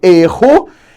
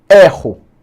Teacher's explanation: o substantivo erro em que aqui eu vou ter um som fechado que é diferente do verbo eu erro